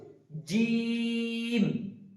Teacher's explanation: জিম বলার সময় খেয়াল রাখবো জিমটা হবে ভারী গলায়, এবং জিমে 3 আলিফ টান দিতে হবে, জিম, এটা যেন চিকন বা সিটি যেন না বেরোয়, জিম যেন না হয়ে যায়, জিম। জিভের মাঝের অংশ উপরের দাঁতের উপরের তালুর সাথে লাগিয়ে উচ্চারিত হবে জিম।